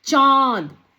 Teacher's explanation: अब हम जब चांद बोल रहे हैं तो चांद में चा ये जो उच्चारण है इसकी ध्वनि मुंह और नाक दोनों से निकल रही है। तो मुंह और नाक से जब ध्वनि दोनों ही से निकलेगी, तो उसे हम कहेंगे अनुनासिक शब्द।